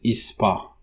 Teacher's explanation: it doesn't exist you know in English it's a spa but in Portuguese you insert this e in the beginning word initial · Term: e insertion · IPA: [is.ˈpa]